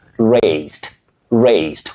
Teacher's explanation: With a sound S, what we call the unvoiced sound S.